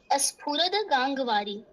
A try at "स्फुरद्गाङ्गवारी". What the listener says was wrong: स्फुरत, अच्छा आधा द होगा ना, हलंत द, क्योंकि मुझे ये स्तुति याद नहीं है।